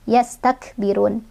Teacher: Kafnya ada angin, punya sifat hamas.